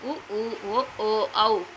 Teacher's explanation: உ ஆகிய ஐந்து எழுத்துக்களும் இதழை குவித்துக் கூறுகின்ற முயற்சியால் பிறப்பன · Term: இதழ் குவிவே